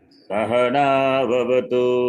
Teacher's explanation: स अनुदात, ह उदात, ना स्वरित